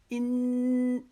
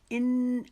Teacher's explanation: کریں گے، ان، یہ ایک الف کے جتنا غنہ ہے، ان، اپنی زبان کا سرا جو ہے موڑیں گے اوپر کی طرف، وہ ہمارے اوپر والے دانت جو مسوڑے ہیں ان کی جڑ سے لگے · انی میں ہم جو نون کے اوپر تشدید آ گئی ہے تو یہاں پر ہم ایک الف کے جتنا اس کو غنہ کریں گے ، ان، یہ ایک الف کے جتنا غنہ ہے، ان، اپنی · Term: نون مشدد کا غنہ